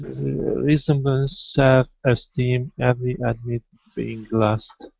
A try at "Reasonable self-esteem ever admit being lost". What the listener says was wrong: Okay, and that is going to be ever instead of every. Ever admit.